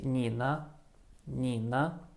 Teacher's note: i execute the the third tone on the first syllable i say and then i can relax i can just forget about any tone